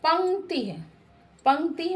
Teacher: नासिका से इसका उच्चारण किया जाता है। अनुस्वार नासिक ध्वनि है। इसका उच्चारण नाक से किया जाता है।